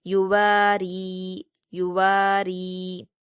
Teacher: را پر زیر ہے تو اس لیے ہم اس کو باریک پڑھیں گے، یعنی را پر جب یا مدہ ہوگی تو بھی ہم اس کو باریک پڑھیں گے.